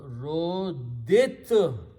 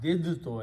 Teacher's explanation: Now, in the recitation, when you have two dals together and a ta, okay, so we do not pronounce the second dal because the makharij of dal and ta are very close in the tongue. So we pronounce this as two tas and we do not pronounce this dal.